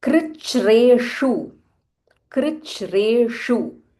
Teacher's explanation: Krich, this is kr, not kru or kr, this is kr. Krich, there is a half ch, and then there is a mahaprana ch, and again there is a half r.